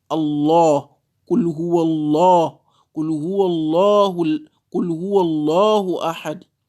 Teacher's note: le mot Allah, la lettre lam du mot Allah sera lue avec tafkhim